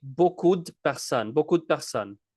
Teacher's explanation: The E in de is cut out.